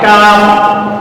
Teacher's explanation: জিহ্বার গোড়া থেকে সামনে একটু আগে বাড়িয়ে কাপ